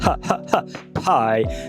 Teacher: Não esquece de aspirar, tá? Pie.